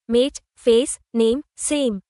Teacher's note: All the long vowel words use the a diphthong, gliding sound, appearing through three different spellings: silent e, mate, face, name, same.